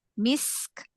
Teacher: Jadi dipanjangin lagi sedikit aja sinnya, rokhwahnya